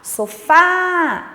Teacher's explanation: Então, você percebe que o fá é a sílaba tônica. Como é a última sílaba, ela é classificada como oxítona.